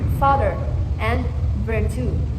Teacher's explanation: F and V are labiodental fricatives, where the air is forced through the lower lip and upper teeth